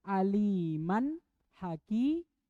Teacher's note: Nah, tapi kalau hakiman karena dia berhenti di situ wakaf, walaupun dia tanwin hakiman, tapi karena dia wakaf di situ berhenti, maka tidak dibaca. Makanya cara bacanya aliman haki bukan hakiman.